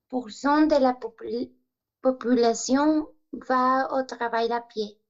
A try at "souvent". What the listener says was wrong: Realmente trabajar la pronunciación de esta pequeña palabra. Decimos en general, souvent, la nasal, ok, de manera que no escuchemos la N. Souvent, souvent.